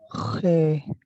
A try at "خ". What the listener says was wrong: عربی والا خے نہ لیں، عربی والے خے کی طرف نہ جائیں، صرف خے جو نارمل اردو میں ہوتا ہے،